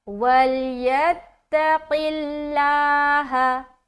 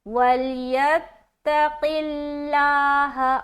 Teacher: قاف کے نیچے زیر ہے, تو لفظ اللہ کلام کو باریک رکھنا